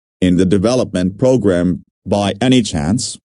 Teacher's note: Notice the rising intonation, which is used in yes, no questions to confirm that something is true.